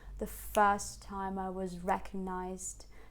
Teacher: this I was is very neutral and quick, and was will use a schwa, meaning that you don't need to articulate was, right?